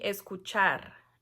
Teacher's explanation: pero la última sílaba es la tónica entonces por eso es una palabra aguda